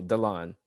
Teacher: the emphasis is on the ending syllable